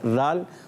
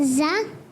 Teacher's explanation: زال کو ہم نے بغیر سیٹی سے ادا کرنا ہے. زال. اور پھر زا کو سیٹی کے ساتھ